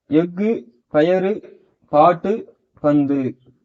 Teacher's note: தனக்குரிய ஓசையில் குறைந்து ஒலிக்கும் உகரம் குற்றிய லுகரம்